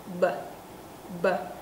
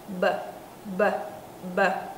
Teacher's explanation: Hai môi bặm lại không bật hơi ra nhưng cổ lại rung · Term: âm rung